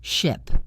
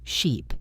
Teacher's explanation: the difference between the short i sound in ship and the long e sound in sheep